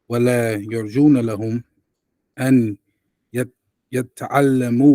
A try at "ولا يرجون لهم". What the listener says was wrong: There is no shadda.